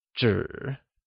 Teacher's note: zhi is spoken with a falling, rising tone, which means paper.